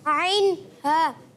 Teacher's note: حلق کے درمیان والے حصے سے. حلق کے درمیان والے حصے سے عین ادا ہوتا ہے